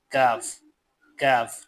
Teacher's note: قاف کی جگہ سے ذرا نیچے منہ کی جانب ہٹ کر اس سے کاف، کاف، ٹھیک ہے، کاف ادا ہوتا ہے